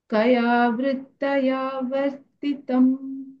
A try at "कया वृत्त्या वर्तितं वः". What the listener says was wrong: कया वृत्त्या वर्तितं वः वृत्तया no not वृत्तया वृत्त्या half the not full the